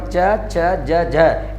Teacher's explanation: च वर्ग के चारों वर्ण च, छ, ज, झ इन्हें स्पर्श संघर्षी कहते हैं, मतलब ये स्पर्शी भी है और ये संघर्षी भी है